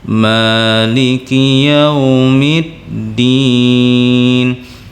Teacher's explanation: alhamdulillahirobbilalamin arrohmanirrohim Malikiyaumiddin dikalimat Malikiyaumiddin itu ada huruf mim yang mana huruf mim disitu memiliki baris memiliki baris Fatah yang memanjang yaitu sepanjang dua harokat